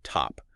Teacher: the T usually comes out with a puff of air. We can write that with a special symbol T.